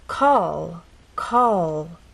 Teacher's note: our tongue pressed against the bump in words like call call as you finish the word the tongue does not drop down it stays pressed against that bump